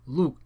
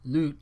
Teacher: the coda is a glottal stop in both cases but they are actually pronounced differently in that the back vowel of the latter word was fronted